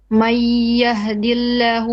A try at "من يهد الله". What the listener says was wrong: من يهد الله. May, not ma, but me. This is one of the exceptions where the fatha is not a straight flat. We incline it a bit, so it's من يهد الله.